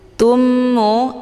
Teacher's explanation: mim yang bertasdid ini dinamakan dengan Idgham Mimi cara bacanya mimnya mim sukunnya langsung dimasukkan ke dalam huruf mim yang bertasdid dengan cara ditekan kemudian ditahan lebih kurang dua kali Jadi dibacanya itu sambil didengungkan